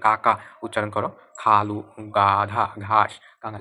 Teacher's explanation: কণ্ঠব্যঞ্জনকে যেসব ধ্বনি উচ্চারণের সময় জিহ্বার পেছনের দিকের অংশ উঁচু হয়ে আলজিহ্বার কাছাকাছি নরম তালুর কাছে বায়ু বাধাপ্রাপ্ত হয়